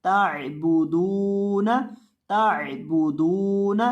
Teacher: तो बा को और दाल को, इन दोनों को पढ़ते वक्त आपने अपने होंठों को गोल करके पढ़ना है और दाल को लंबा भी करना है, क्योंकि इसके बाद वाव मद्दा आ रही है।